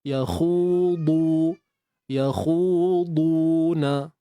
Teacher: Huruf dad ni dia ada satu proses yang lain lah selain daripada angkat pangkal lidah. Yang mana kita kena angkat juga keliling lidah kita. Itulah yang dinamakan sifat itbaq pada huruf dad.